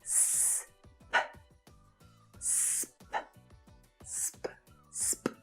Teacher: S and P are both unvoiced consonant sounds, and the sound is made by pushing air through your mouth